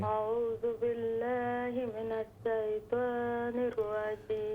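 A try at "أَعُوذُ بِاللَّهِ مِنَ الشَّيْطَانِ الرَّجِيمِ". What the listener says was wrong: اعوذ باللہ من الشیطان الرجیم۔ شین کو درست کریں۔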